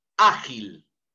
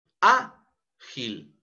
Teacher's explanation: es en A donde recae la mayor entonación de voz. Y como termina en una consonante, por eso tildamos la letra A, ágil. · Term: palabra grave